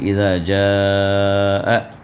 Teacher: بھی اور حمزہ بھی وہاں پر ایک ساتھ مل کر آیا، تو یہ مد متصل ہے جو 4 یا 5 حرکت تک آپ کو کھینچنا واجب ہے ۔ تو ہم جو پڑھیں گے اذا جاء کھینچ کر پڑھیں